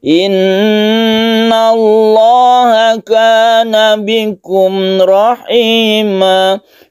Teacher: Lamnya ini kita baca tebal atau tafkhim atau disebut juga mufakham.